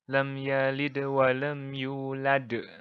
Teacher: di tengah-tengah kalimat di tengah-tengah kalimat seperti ini eh bedanya dengan Qalqalah Kubro ini pemantulnya lebih medok lebih tebal lebih besar